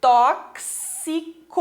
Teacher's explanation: Esse X tem um som de KS